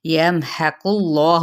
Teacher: یمحق اللہ، اس میں جلالہ یعنی اللہ کا نام، یعنی اس کا جو اندر لام ہے وہ پر پڑا جائے گا قاف کے اوپر پیش کی وجہ سے